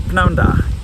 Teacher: you'd be more likely to shorten this to pnawn da, just pronouncing that P at the start, pnawn da. And that means literally good afternoon.